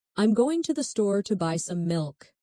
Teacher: Notice how certain words are stressed. Going, store, buy, milk. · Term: stressed and unstressed syllables